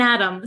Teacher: we don't pronounce it them we say m we take off the th sound